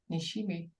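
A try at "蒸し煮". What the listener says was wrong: It's not mushimi. It's mushini. So mushi means steam, and ni is cooking, like ni of nishime. So it's between steaming and making nishime.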